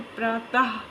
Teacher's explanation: इसका उच्चारण वर्ण के बाद हा की ध्वनि के समान होता है, यानी लास्ट में क्या साउंड निकलता है, हा। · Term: विसर्ग